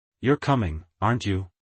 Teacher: Rising intonation shows curiosity or doubt.